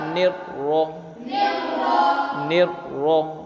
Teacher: زبر ہے، اس لیے را کو پور پڑھیں گے، جب ملا کر پڑھیں گے نون کے ساتھ تب بھی پور پڑھیں گے، اور را کو زبر کے ساتھ پڑھیں گے تب بھی را کو پور پڑھیں گے۔